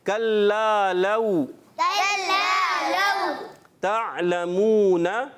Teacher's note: یہ حرف لین ہے، واو ساکن سے پہلے زبر آ جائے تو حرف لین ہوتا ہے، واو لین ہوتا ہے، اس کو بغیر کھینچے نرمی سے پڑھتے ہیں